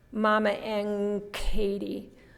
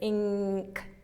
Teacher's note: we don't say n at all we say n g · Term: coarticulation